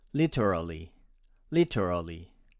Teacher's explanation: vowels of e and a omitted this is very british and my american friends would pronounce it as literally literally with no vowels omitted